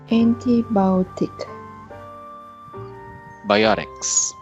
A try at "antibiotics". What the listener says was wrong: you're putting a little too much energy on e sound uh try to relax